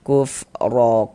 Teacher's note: Maka ini huruf ro kita baca tabkhim, kita baca tebal sehingga pangkal lidah kita naik terangkat ke atas · Selanjutnya di sini huruf roh memiliki tanda baca fathah ya, baris di atas ini tanda baca fathah atau harokat fathah, maka ini huruf roh kita baca tabkhim, kita baca tebal. Sehingga pangkal lidah kita naik terangkat ke atas ketika kita mengucapkannya. Kuf ro ko dibaca panjang.